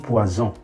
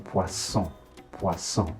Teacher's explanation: I've told you to know if you're pronouncing it properly, make sure you just touch your throat. Make sure there's no vibration while saying poisson. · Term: S sound